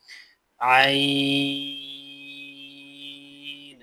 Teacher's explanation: اب یہاں پر آپ دیکھیں مخرج نمبر 3 یہ لکھا ہوا ہے، وسط حلق، حلق کا درمیانی حصہ جس سے عین اور ح الفاظ ادا ہوتے ہیں